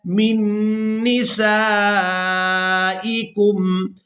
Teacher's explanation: یہاں پر ہم نے میم کو نون مشدد کے ساتھ ملانا ہے اور غنہ کے ساتھ ادا کرنا ہے